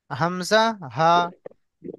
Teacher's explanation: হালাকের বা কণ্ঠনালী শুরু হতে উচ্চারণ হয় হামজা হা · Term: 1 নম্বর মাখরাজ